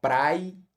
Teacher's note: esse i ele é uma semivogal, ele é fraquinho justamente porque ele perde força estando ao lado do a que o antecede